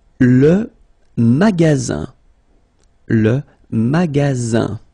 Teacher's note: only one S between two vowels. Then you get the sound Z, alright? And then the ending here is IN, so it's nasal, it goes in your nose, and it's un.